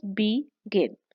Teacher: जैसे कि the word is बिगिन, इसमें जो सिलेबल स्ट्रेस है दैट इज गिन, गिन। टू सिलेबल्स बी गिन। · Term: स्ट्रेस सिलेबल